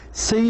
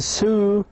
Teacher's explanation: C has a front vowel and sue has a back vowel.